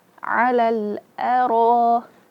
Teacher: Ro tebal karena dia berharakat fathah dan ada di situ alif, huruf mad. Huruf mad bertemu dengan hamzah dalam satu suku kata.